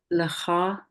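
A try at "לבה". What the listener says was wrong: leva, va. That's a va.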